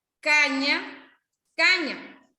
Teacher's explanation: La ñ, que es nasal palatal sonora